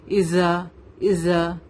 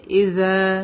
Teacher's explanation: ذال میں buzzing sound نہیں آتی